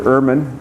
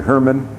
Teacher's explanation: they invariably forget the H because they don't really say H in their language, and so they sometimes call me Dr.